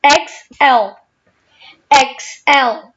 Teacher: So stress is on the second syllable, right?